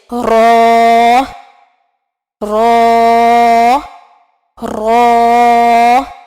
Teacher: زبان کے کنارے جب اوپر کے دانتوں کی طرف اٹھے تو رو ادا ہوتا ہے